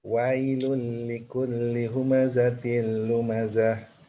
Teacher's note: kalau mati baris atas dilembutkan wai, bukan wae